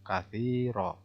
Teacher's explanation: Ti itu mad tabi'i dibaca 2 harokat.